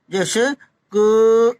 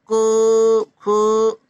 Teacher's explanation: इनमें जीवा के मूल का स्पर्श होता है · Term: जीवा मूली